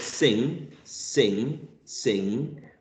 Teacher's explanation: sing sing the last sound if you feel your nose sing you can feel a vibration in your nose because the air is escaping through your nose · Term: nasal sounds